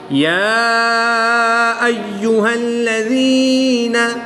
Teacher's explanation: کھڑی زبر کے بعد حمزہ دوسرے کلمے میں ہے تو یہاں پر مد منفصل ہوگی، 2 سے 3 الف تک کھینچ کر پڑھیں گے